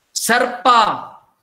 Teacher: Sarpa, this second vowel is dropped.